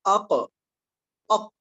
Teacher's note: சந்திப்பதன் மூலம்தான் சுகூன் வெளியாகிறது உதாரணமாக பாருங்கள் நாம் அக் அக் என்று நிறுத்திவிட்டால் அந்த நாவுடைய அந்த ஆக தொங்கல் பகுதி மேல் அன்னத்தில் பட்டு படுவதன் மூலம் தான் சுகூன் வெளியாகும்